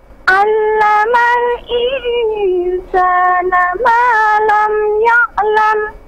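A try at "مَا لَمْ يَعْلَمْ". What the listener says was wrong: Sekali lagi, ma lam ya'lam. Sedikit lagi, coba ya, huruf yang terakhir, kata yang terakhir. Ya'lam.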